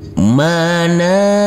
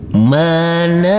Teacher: Huruf nun kita baca panjang dengan panjang 2 harokat.